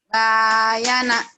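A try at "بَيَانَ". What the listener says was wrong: Bayana. Bukan. Yang panjangnya ya-nya. Bayana.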